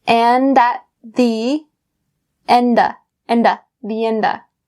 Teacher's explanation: So we bring that d sound over to at.